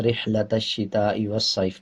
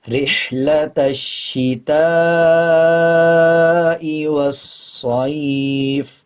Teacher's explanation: آگے دیکھیں تا کے بعد الف ہے، الف کے اوپر مد ہے، یہ بڑا مد ہوتا ہے، اس کو 5 سیکنڈ لمبا کیا جائے گا اور یہ واجب ہوتا ہے۔